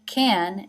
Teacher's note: now here it is pronounced kun, it is reduced